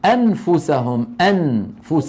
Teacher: الإنسان بدل أن يقول العربي أنفسهم، أنفس، يعني بدل أن يقرع النون بطرف لسانه يقول أم، فيذهب من الهمزة إلى مخرج الفاء.